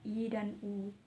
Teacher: vokal tertutup dibentuk dengan lidah diangkat setinggi mungkin mendekati langit-langit